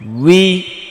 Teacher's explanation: ঠোঁটটা অনেক রাউন্ড করে অনেক গোল করে তারপর আবার ছেড়ে দিতে হবে স্বাভাবিক অবস্থায়। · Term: ওয়াও জের উই